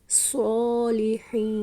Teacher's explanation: حین میں خو نہیں پڑھیں گے